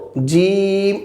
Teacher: আমরা একটু টেনে বলবো জিম এক আলিফ টেনে বলবো